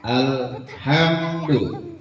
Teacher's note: Jadi nggak boleh tawalud kan, lam itu bukan huruf qalqalah ya.